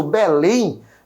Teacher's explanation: A minha última sílaba ali é proferida com mais força e ali leva também o meu acento. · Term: oxítonas